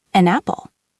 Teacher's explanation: It sounds like one word, an apple. The N from An has jumped over to the front of apple. It sounds like A-N-A-P-P-L-E, an apple. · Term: consonant to vowel linking